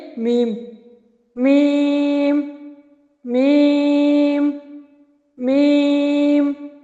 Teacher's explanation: दोनों होठों की खुशकी से इससे मीम अदा हो रहा है · دونوں ہونٹوں کی خشکی سے، اس سے میم ادا ہو رہا ہے